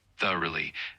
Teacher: the word is pronounced thoroughly with the emphasis on the first syllable like thoroughly